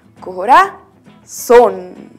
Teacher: lleva también acento en la vocal o